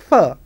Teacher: the lower lip touches to the upper teeth and that friction is hard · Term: fricative consonants